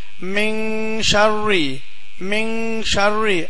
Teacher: நூன் சத்தம் கொடுக்காம இங் சத்தம் கொடுத்து ஓதணும் மின் ஷர்ன்னு சொல்லாம மின் ஷர் மின் ஷர் அப்படின்னு ஓதணும் ரைட்டா இன்னொரு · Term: இஹஃபா உடைய சட்டம்